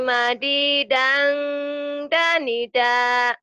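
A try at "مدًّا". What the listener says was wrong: Kalau madidang seperti ada madnya di sini. Di sini enggak ada madnya. Madidang ditahannya di engnya, ikhfanya ya. Madidang danida. Kalau pelan kayak gini.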